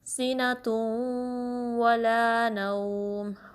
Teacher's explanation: ناک میں آواز لے جانی ہے، ادغام ود غنہ ہوگا